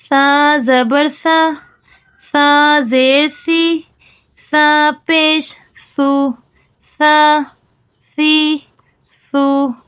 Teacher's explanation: सा क्या है मोटा नहीं है बल्कि क्या है बारीक है